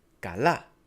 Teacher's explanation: the word kala has a stress on the last a.